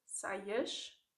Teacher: if it comes at the end of a word, saias, then you have a sh sound instead